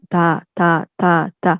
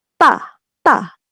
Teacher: cara pelafalannya biasanya, apa ya, pitch kita jadi lebih naik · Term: tense konsonan